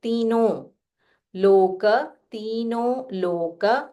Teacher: you can say तीनों with a nasal tone